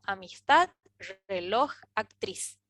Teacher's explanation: Obviamente la D, la J y la Z son diferentes a N y S, pero tanto amistad como reloj o actriz son palabras agudas porque pronunciamos con más fuerza en la última sílaba